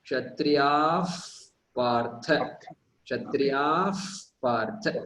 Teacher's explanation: It's almost you insert an F in before the P. That is how you pronounce it. · Pa, pa, ba, ba, ma, correct? So before, when it appears before pa and pa, then the pronunciation of Visarga changes to the letter F in English. F. So Kshatriyaha Partha is there, and if you pronounce it together, it will become Kshatriyaf Partha. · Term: Upadmaniyaha, Upadmaniya